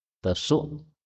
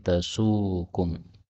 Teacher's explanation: hamzah boleh dihilangkan menjadi tasukum, karena hamzah itu bagi lisan orang Arab berat